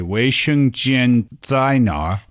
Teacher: it's much less common to hear someone pronouncing the 儿 化 音 in the southern part of the country